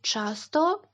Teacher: ч та щ в українській вимовляються дуже твердо просто найтвердіше на що ви здатні